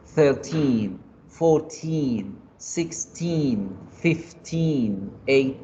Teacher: Yo alargo la I al finalizar cada uno de esos números para entender que son los que van del 10 al 20.